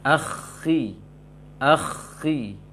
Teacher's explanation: tingkatan ketebalan untuk kho sukun sebelumnya kasroh sangat minim dia